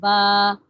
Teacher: با جو ہے یہ دونوں ہونٹوں کو ملا کے پڑھتے ہیں نا